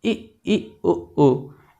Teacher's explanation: जिन स्वरों को बोलते समय हमारा मुख लगभग बंद रहता है उनको समृत स्वर कहते हैं। जैसे इ उ, इनको हम मुँह देखिए लगभग मुँह बंद करके भी बोल सकते हैं।